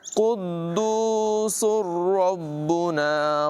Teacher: سبوح قدوس، سن بھی پڑھ سکتے ہیں اور تجوید کا قاعدہ ہے کہ تنوین کے بعد را ہو تو پھر ملا کر ادغام کر کے پڑھتے ہیں، لیکن غنہ نہیں ہوتا